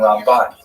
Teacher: Rambam is pronounced with the emphasis on the first syllable, Ram, and Ramban is pronounced with the emphasis on the second syllable